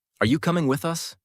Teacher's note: Notice how your pitch rises on you and with us, then falls at the question mark.